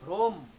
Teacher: যেমন দেখো ভ্রম, ভ্রম, ভ্রমটা কিরকম আমরা উচ্চারণ করি দেখো, ভয় র ফলায় ওকার, ম, একটি হসন্ত থাকতো, ভ্রম, কারণ আমি ভ্রম বলি না, বলি ভ্রম। ভ্রম বলার কারণে ময় হসন্ত এসে গেছে, ময়ের অর্ধেক উচ্চারণ করেছি আমি, হসন্ত আসবে এই কারণে যে এটিকে আমি সম্পূর্ণ উচ্চারণ করিনি।